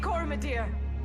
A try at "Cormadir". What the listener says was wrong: Cormadir. the O is silent.